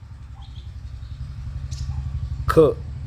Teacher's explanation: याचा उच्चार करत असताना ह्याच्यामध्ये ह मिसळला जातो. ख, छ, ठ, थ, फ, घ, झ, ढ, ध, म, श, श, स, ह. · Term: महाप्राण